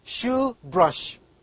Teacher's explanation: This word begins and ends with the voiceless palatal sound. It starts with sh and again ends in sh.